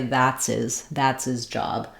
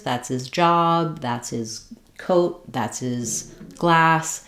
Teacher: in the words like his and her and him, if they're unstressed and unimportant, we sometimes will drop the H sound.